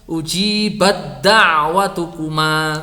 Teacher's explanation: Ta bertemu dengan tal, maka ta'nya ini sudah tidak usah dipikirkan karena ini sudah idgham kamil. Jadi langsung dari ha ke huruf tal.